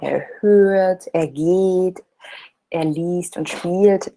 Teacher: we do kind of stretch the vowels a little bit